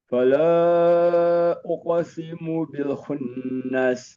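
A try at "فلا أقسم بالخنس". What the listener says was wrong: Bil khunnas. Bil satu harokat. Fala uqsimu bil khunnas.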